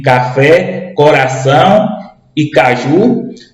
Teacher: Ou seja a sílaba mais forte é a última sílaba da palavra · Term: oxítonas